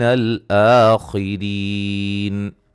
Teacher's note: خا کو موٹا ادا کریں گے، را کو باریک پڑھیں گے